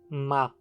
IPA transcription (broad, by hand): ɱa